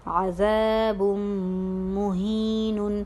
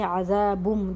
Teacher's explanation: عذابن ہم نہیں کہتے، عذابم جو تنوین کے لاسٹ میں جو نون کی آواز آتی ہے تو ہم اس کو مدغم کر رہے ہیں میم میں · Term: ادغام مع الغنہ